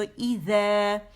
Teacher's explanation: اور یہ زا نہیں ہے، بزنگ ساؤنڈ نہیں ہے، یہ ہے ذیل. ذیل جب ہوگا تو ٹپ آف دا ٹنگ کہاں جائے گی، ہماری رأس اللسان، بالکل ٹپ.